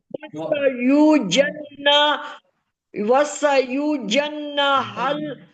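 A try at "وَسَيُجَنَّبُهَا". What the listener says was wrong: نہ نہ نہ نہ نہ کے بعد با بھی ہے نا. وسا یوجن وسا یوجن وسا نہیں ہے بات سنو وسا وسا ہے نا. مجھے ایسا سنائی دیا نا آپ نے، اس لیے تو میں نے روکا آپ کو. وسا نہیں، یہ غلط پڑھ رہی ہے.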